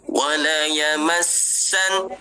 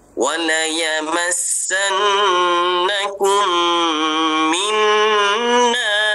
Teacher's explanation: sin mesti bunyi safir dia. Mesti bunyi angin dia.